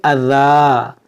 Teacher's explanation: यहाँ पर देखें दो ज़बर है और यहाँ पर या भी है, इस या को पढ़ा नहीं जाएगा, یہاں پر ہم وقف کریں گے، رکیں گے تو اس دو زبر کو ہم الف سے بدلیں گے، اس کو پڑھیں گے اذا.